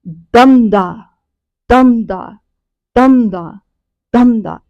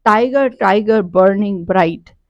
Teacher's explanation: पर लाइन है, दैट is each line has 8 syllables with a stressed और unstressed. तो स्ट्रेस्ड पहले आ रहा है, ठीक है, स्ट्रेस्ड अनस्ट्रेस्ड, स्ट्रेस्ड अनस्ट्रेस्ड ऐसे, ठीक है। दमदा दमदा दमदा दमदा ऐसे, ठीक है। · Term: ट्रोकेक टेट्रामीटर